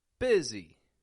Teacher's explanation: I'm not saying bussy, but I'm changing the U to an I and the S to a Z.